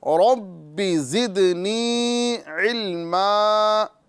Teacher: یہاں پر با میں مشدد والا قلقلہ کریں گے، را کو صحیح طریقے سے پر کریں گے، اور یا مدہ کریں گے، یعنی ایک الف کے برابر کھینچ کے پڑھیں گے